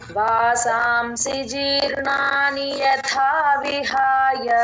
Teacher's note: విహాయ tune మళ్ళీ ఈ శ్లోకం డిఫరెంట్ జీర్ణాని ర కింద అణ ఒత్తు యథా థ మహా ప్రాణం అక్కడ తథ రెండవ థా పలకాలి